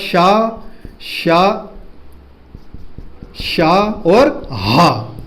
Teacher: जिन्हें बोलने पर बहुत ज्यादा वायु की आवश्यकता हो, भयंकर वायु की आवश्यकता हो, है ना, उन्हें बोलते हैं ऊष्म या संघर्षी व्यंजन